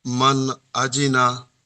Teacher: নুন সাকিনের পরে হুরুফে হালকির ছয়টি অক্ষরের মধ্যে হামজা এসেছে, তাই নুন নুন সাকিনের আওয়াজকে বিনা গুণনায় তাড়াতাড়ি পড়তে হবে, একে ইজহার বলে। আহ, হামজার উপরে জবর এসছে, জবরটি হলো হারাকাত, হারাকাতের পড়া তাড়াতাড়ি পড়তে হয়, টান দেওয়া নিষেধ।